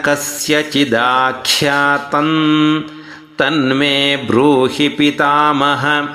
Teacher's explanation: ಖ್ಯಾತನ್ ಖ್ಯಾ ಮಹಾಪ್ರಾಣ ಇದೆ, ಗಮನಿಸಬೇಕು ಅದನ್ನು